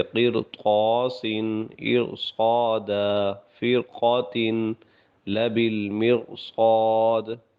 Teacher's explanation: حالانکہ را سے پہلے زیر بھی ہے، لیکن چونکہ اس کے بعد موٹے حروف آ رہے ہیں تو اس کی وجہ سے ان کو پر پڑھا جائے گا۔